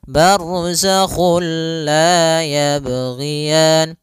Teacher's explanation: Nah, idgham bila gunnah juga sendiri, itu idgham yang kita namakan juga idgham kamil, yaitu kita memasukkannya secara utuh, secara seluruhan kepada huruf lam, sehingga tidak menyisakan sedikit daripada bunyi huruf nunnya. Ya, sehingga langsung masuk barzakhul la, dan dia bila gunnah berarti tidak boleh disertai dengan gunnah, tidak boleh ada penahanan, tidak boleh barzakhul la, enggak boleh, tapi langsung saja barzakhul la yabghiyan.